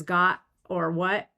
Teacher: With a glottal stop instead of a t.